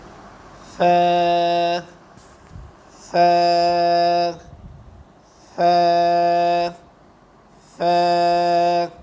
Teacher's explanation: ثا جو ہے نرم حروف ہے، اور اس کی جو زبان کی نوک ہے وہ دانتوں کے سر کے ساتھ لگے گی اور اس کے اندر ذرا نرمی ہوگی، اور اس کو بھی ایک الف کے برابر کھینچ کر پڑھیں گے، جیسے ث ث ث ث۔